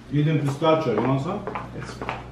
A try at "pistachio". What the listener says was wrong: You don't actually say a CH in pistachio. Like pistachio.